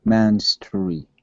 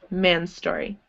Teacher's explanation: when you have two S's beside each other, like this, you can blend it and pretend there's only one S